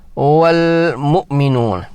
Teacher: حمزہ ساکنہ جھٹکے سے پڑھی جاتی ہے